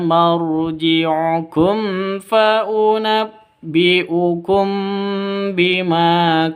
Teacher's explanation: mim mati bertemu dengan fa, jelas terang karena izhar safawi.